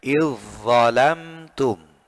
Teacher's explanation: Zalnya diidghamkan, dimasukkan kepada huruf dha-nya. Ya, okay. Jadi bacanya idzalamtum, bukan idzalamtum. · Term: hukum idgham